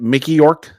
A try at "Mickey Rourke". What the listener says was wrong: Mickey Rourke. Rourke with an R.